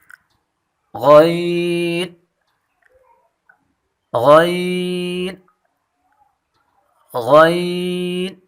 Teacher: غین کی مخرج ادنا حلق، یعنی جو پہلے ہم مخرج پڑھ چکے ہیں خا حرف کی، وہی مخرج غین کی ہے، اور یہ دونوں حرف پر پڑھے جاتے ہیں